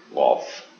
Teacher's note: Yang titik 2 itu qaf ini berada di pangkal lidah dengan langit-langit.